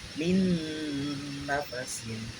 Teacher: Nama hukum tajwid di atas adalah idgham diguna, ya, karena ada nun mati menghadapi huruf nun, membacanya harus didengungkan.